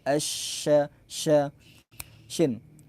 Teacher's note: menyebarnya suara menyebar nafas pada pengucapan syin